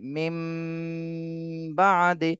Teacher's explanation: নুন কিন্তু আর পড়তে আসতেছে না পড়া হচ্ছে না শুধু মিমকেই পড়তে হচ্ছে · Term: ইকলাবের